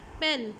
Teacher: इसकी एक एग्जांपल आप ये देखिए कि अगर मैं बोलती हूँ पेन, तो इसमें प साउंड के लिए जो कंस्ट्रिक्शन है वो कहाँ पर आ रही है। प्लेस ऑफ आर्टिकुलेशन क्या है कि both lips are meet together to produce the sound प